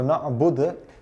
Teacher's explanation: With the word dal, normally when you are pausing on it, so na'bud, you have to jerk the dal